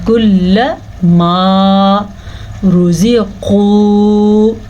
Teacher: کل ما رزقو، را کو پر پڑھیں گے، را کے اوپر پیش ہونے کی وجہ سے. قاف کو پر پڑھیں گے کیونکہ قاف ہمیشہ ہی پر پڑھا جاتا ہے، زبر ہو یا زیر ہو کچھ بھی ہو